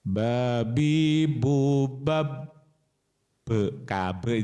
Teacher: babnya itu syiddah, tertahan.